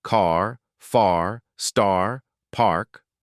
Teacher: Hold it long. In many accents, British, Australian, South African, the R is not pronounced. · Wide open mouth. Jaw fully dropped. Tongue is low and pulled back toward the throat. Hold it long.